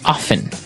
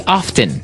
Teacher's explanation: They kind of leave out the strong T sound.